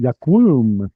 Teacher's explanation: that vav, which was originally W, and the ooh sound naturally collapse together